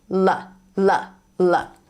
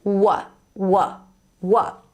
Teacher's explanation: there are some speakers who might not pronounce this L sound like that, they will pronounce it as w w w. Now when native English speakers hear w, they associate that sound with the W sound, a different sound.